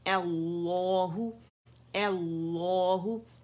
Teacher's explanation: ایل نہیں پڑھنا آپ نے، لام باریک نہیں کرنا پہلا والا، وہ بھی موٹا ہوگا.